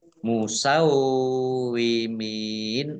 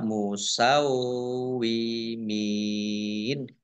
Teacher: wawunya dibaca dobel ya Ada tasdidnya wau sukun berarti dibaca [Musik] musawimin mim kasroh Ya Sukun